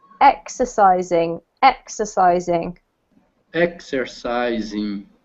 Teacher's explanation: So the emphasis here is on the first syllable, the X